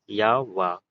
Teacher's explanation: जिसके उच्चारण में हवा बिना संघर्ष के बाहर निकले इसे अर्धस्वर भी कहते हैं।